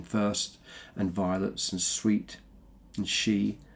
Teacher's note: we've got the sibilants. That's the alliteration of the S sound in first, and violets, and sweet, and she. And it creates quite a hushed, almost reverential tone of his admiration of her beauty and of her delicacy.